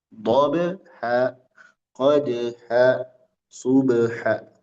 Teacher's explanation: Di dalam pada huruf ba dan dal qalqalah memantul.